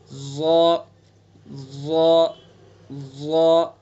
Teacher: ظا کے اندر صفت استعلا ہے، یعنی اس کو پر کر کے پڑھیں گے ظا ظا ظا، مخرج وہی ہے، یعنی زبان کی نوک کو ثناء علیا کے کنارے پر لگائیں گے، پر کرنے کے لیے جو پچھلا حصہ ہے اس کو اوپر تالو پر چمٹا دیں گے، پھر ادا کریں گے ظا طا صاد۔